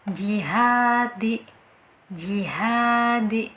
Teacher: Nah, itu posisi lidah pasti secara otomatis tengah lidah itu menempel dengan langit-langit atas kita ya, menempelnya sangat kuat sehingga makhrajnya benar-benar tertutup dengan sempurna, tidak ada rongga sama sekali ya, tidak ada celah. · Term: jim